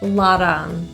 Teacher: So it sounds like a flat T or a quick D